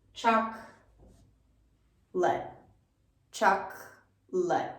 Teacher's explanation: And we take this second O right out.